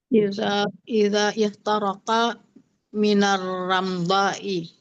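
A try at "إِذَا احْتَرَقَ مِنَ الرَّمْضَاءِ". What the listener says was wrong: Jadi hamzah di ihtaraka itu enggak dibunyikan, itu yang hamzah wasal. Jadi izah gitu aja. Izah taraka minar ramdai. Jadi izah taraka minar ramdai.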